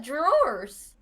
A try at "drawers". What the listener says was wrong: You put a weird emphasis on like R?